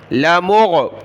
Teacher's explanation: لام کو کھینچنا نہیں ہے، لا نہیں پڑھنا. لمغ، غین کو گلے سے نکالیں.